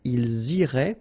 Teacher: make the liaison as well. You get this S and then the vowel after.